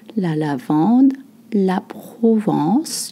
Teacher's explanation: You don't voice the N sound.